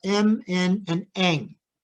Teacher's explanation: we stop the air in the mouth but we let the air go through the nose creating an um sound which is added to the stop articulation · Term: nasals